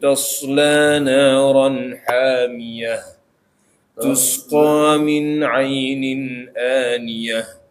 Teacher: Nah, kemudian kita lihat di akhir-akhir ayatnya ini ada selalu ditutup dengan tak marbutoh. Nah, tak marbutoh ketika waqaf maka bunyinya ha, ini harus jelas